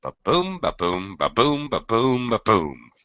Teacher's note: each of these five pairs consists of one unstressed syllable and one stress syllable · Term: I Amic pentameter